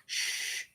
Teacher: Shh, no vibration. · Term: voiceless palatal